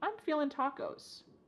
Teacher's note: cutting off that G